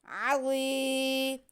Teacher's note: ऐन पे ज़बर, ज़ा के नीचे ज़ेर और आगे या साकिन। ऐन को बिल्कुल नहीं खींचेंगे लेकिन या साकिन से पहले ज़ेर हो तो या मद्दा होती है, इसलिए हमें ज़ा की आवाज़ को खींचेंगे